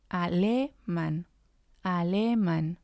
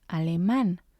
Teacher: because of the accent we know we have to stress the last syllable